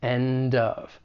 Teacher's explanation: There's also linking that may occur. We can link that final consonant sound in end with the beginning vowel sound in of